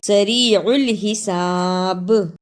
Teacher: ادا کرنے کا طریقہ من بعد سریع الحساب، اسے سریع الحساب نہیں پڑھنا، عین کی صحیح آواز بھی آنی چاہیے اور با پر رکنے کی صورت میں قلقلہ بھی کرنا ہے